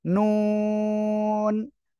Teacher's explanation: জিহ্বার আগা তার বরাবর উপরে তালুর সঙ্গে লাগিয়ে আমরা এই অক্ষরটা উচ্চারণ করব